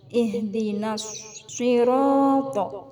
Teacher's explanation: Maka hukum tajwidnya adalah idgham syamsiyah. Nas, alif lam ta'rif diikuti shad. Cara membacanya dimasukkan ke huruf shad.